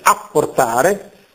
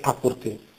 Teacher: le doppie, le geminate, sono scritte, ma non pronunciate